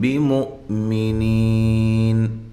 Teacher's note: یہ حمزہ کو جھٹکے کے ساتھ اور نی یا مدہ ہے، وقف کی صورت میں آپ یہاں مد کر سکتے ہیں.